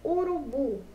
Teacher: Bu é a nossa sílaba pronunciada com mais força, não é verdade? Então, o bu é a nossa sílaba tônica.